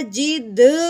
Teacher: یہ اس کا قلقلہ، یعنی حرف کو اس کی جگہ سے ہم نے کیا کر دیا؟ ہلا دیا